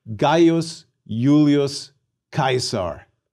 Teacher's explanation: Note that the diphthongs AI and AE are both pronounced I. We pronounce the initial I in Julius like a Y, Julius.